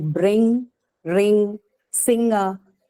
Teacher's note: which can be seen in words like bring ring singer right so what you hear is not a distinct n and G sound in these words · what you hear is not a distinct n and g sound in these words. It's actually a different velar sound which you call ng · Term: third velar sound